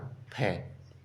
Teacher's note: फ दंत और ओठों से उच्चारित है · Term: दंतोष्ठ